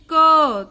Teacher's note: जब आप क बोलोगे तो आपके मुंह से क के साथ में अ भी निकलता है। आप ध्यान से सुनेंगे तब आपको पता चलेगा कि आप सिर्फ क नहीं बोल रहे, आप उसके साथ में अ का भी उच्चारण कर रहे हो।